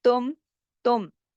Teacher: تم، تم پورے اظہار کے ساتھ ہم نے پڑھا کیونکہ آگے میم ساکن ہے اور میم ساکن کے بعد تا آ رہا ہے، تو یہ جو اظہار شفوی کا قاعدہ بھی اس کے اندر ہی لگ رہا ہے.